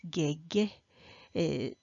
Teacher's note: lexically this word has tone three low rising tone however it when it comes to the topic position it may